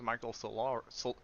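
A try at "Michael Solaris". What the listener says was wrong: Solaris. Solaris. Solar with an IS.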